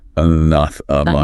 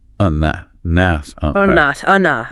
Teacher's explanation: really focus on mastering the stress on that second syllable